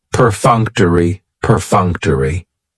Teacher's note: That third syllable has the schwa, and it's going to end with that long E sound.